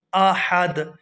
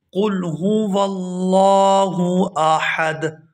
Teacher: یہاں حمزہ کے بعد جو ہا ہے، یہ جو ہا ہے اس کو حلق سے اچھی طرح سے ادا کریں گے۔ قل هو اللہ احد، اور آخر سے وقف کی وجہ سے دال کو ساکن کر دیں گے اور ہا کو دال کے ساتھ ملا کر پڑھیں گے۔